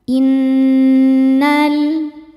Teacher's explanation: nun tasydid hukumnya ghunah musyaddadah karena nun bertasydid. Cara bacanya berdengung. Dengungannya tahan kurang lebih dua harakat. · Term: gunnah musyaddadah